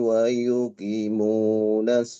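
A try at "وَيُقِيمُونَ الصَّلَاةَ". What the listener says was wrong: Wa yuqimunas salata. Qi panjang, mu panjang. Ulangi. Wa yuqi.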